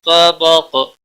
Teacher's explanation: قاف وقف کی صورت میں ساکن ہوگا اس پر قلقلہ بھی ہوگا مستعلیہ بھی ہے